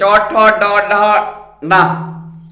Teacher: तो मूर्धा से उच्चारण होने के कारण मूर्धन्य वर्ण है